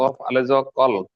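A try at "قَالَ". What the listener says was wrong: কফ আলিফ যাবার ক, আলিফ মাদ্দা টান হবে।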